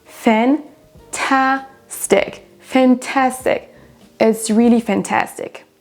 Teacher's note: La deuxième syllabe est prononcée plus forte que les autres.